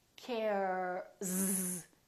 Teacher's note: If you said Z, you were right, because care, the R is a voiced sound.